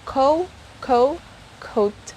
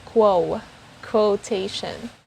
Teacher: the difference is the sound of the letter w the second one has the sound of it and the first one doesn't have the sound of it